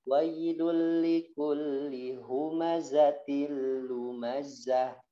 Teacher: apabila dalam keadaan waqaf maka dibaca ha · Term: tak marbutoh